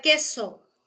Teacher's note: En la palabra queso hay fonema velar K verdadero